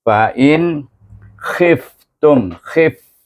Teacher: Izhar khalqi. Baca nun itu, suku kata in itu dengan izhar. Tak ada panjang, tak ada dengung.